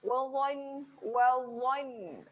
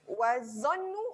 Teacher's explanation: dha berada di hujung lidah, cucuk hujung gigi atas, keluarkan sedikit. Yang ni kena muncung sikit. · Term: huruf tebal